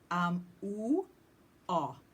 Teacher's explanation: OO and O are classified as the two back vowels. I think really they're called back vowels because you tend to feel them more deeply.